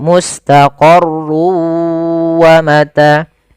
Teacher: masukkan tanwinnya ke huruf wau sehingga suara n-nya hilang. Tinggal ganti wa maka mustaqarun awalnya menjadi mustaqarru karena dia bertemu wau masuk ke wa. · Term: idgham bighunah